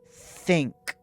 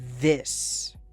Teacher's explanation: Think - no vibration in your throat. This - you feel a buzz.